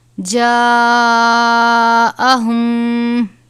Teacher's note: بڑی مد ہے، 5 الف کے برابر